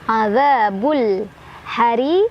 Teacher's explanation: ri-nya dibaca secara tarqiq karena ro-nya barisnya di bawah ya, jadi ditipiskan. Hariq mada aridli sukun karena ada mad tabi'i ketemu sama huruf hijaiyah yang disukunkan.